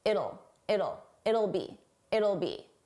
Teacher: It'll it will sounds like it'll it'll it's a very soft sound. It's easy to miss that will. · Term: contraction